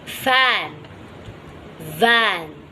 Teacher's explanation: Pressing the lower lip with the upper front teeth, which are called labiodental fricatives.